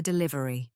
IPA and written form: dɪˈlɪvəri (DELIVERY)